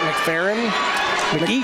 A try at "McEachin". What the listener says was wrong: That's an E in there. Eacham. Mac Eacham is how I would pronounce it.